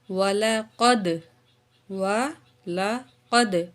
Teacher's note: واو زبر وا، لام زبر لا، قاف زبر دال، قد، قاف کو موٹا کر کے پڑھیں گے